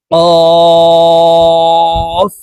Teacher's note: কফের উচ্চারণ জিহ্বার গোড়া তার বরাবর উপরের তালুর সঙ্গে লাগাইয়া উচ্চারণ করব কারণ কফের মাখরাজ জিহ্বার গোড়া থেকে হবে কফ কফের প্রথম রূপ